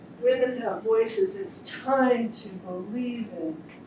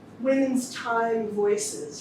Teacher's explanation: The way I put this line together, I actually put more emphasis on time. You know, I gave that a stronger syllable by the phrase I put it in.